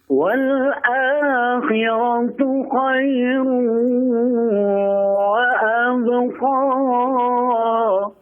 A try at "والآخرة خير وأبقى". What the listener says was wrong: Nah, pendekkan sedikit ini, 2 harakat saja. Nah, itu kalau lanjut baru dipanjang 4 harakat. Wal akhiratu khairun wa abqa. 2 harakat saja.